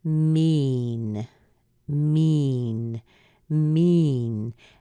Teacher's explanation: it a longer e there's almost a drop in there too so it's not really short it's rather long and it is called a long e